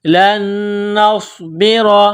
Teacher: نون ساکن کے بعد دوسری نون ہے جو مشدد ہے تو یہاں آواز ناک میں چھپائیں گے، غنہ کریں گے. نون ساکن سے پہلے والے حرف لام کو نون کے ساتھ ملانا ہے، پلس کرنا ہے.